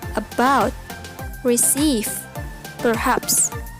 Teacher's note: the final syllable is stressed in about receive perhaps